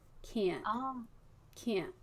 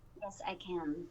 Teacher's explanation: Oh, that NT sound. That NT sound is a lot higher.